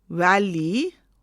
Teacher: V is pronounced by placing the upper teeth on the bottom lip.